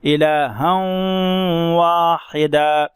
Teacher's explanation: یہاں ہم نے تھوڑی دیر آواز کو ہم نے ناک میں چھپایا اور ادغام کے ساتھ پڑھا